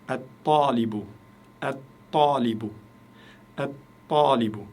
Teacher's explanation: Le L, il a disparu. Je ne dis pas L, talibu. Le L a disparu à cause de la lettre solaire, ta.